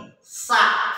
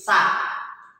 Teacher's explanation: Sa itu posisi ujung lidah digigit